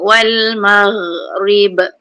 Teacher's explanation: ghain ni ingat tak ada lantunan, tak ada tabalut.